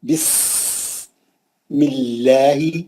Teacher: سین میں سیٹی رہنا. بسم اللہ، لام جلالہ پتلا پڑھیں گے، میم پہ زیر ہے.